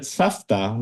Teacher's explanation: But again, with the voice v, same, but we pronounce it safta because again, the ta, that's unvoiced consonant, and it backwards partially assimilated.